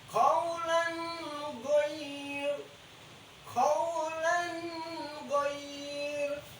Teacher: Sini ada tanwin fathah tain ketemu dengan huruf ghin berhukum izhar, dibaca jelas.